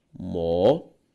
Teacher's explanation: A sílaba tônica de mocotó, tó, uma palavra oxítona.